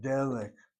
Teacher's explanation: Notice where the accent is over that first syllable.